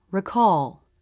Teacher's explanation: the dark part is made with the back of the tongue as the jaw closes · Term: dark L